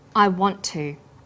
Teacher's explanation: the final sound in want is held slightly longer on the tongue then to is pronounced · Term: consonant + same consonant linking, consonant plus same consonant linking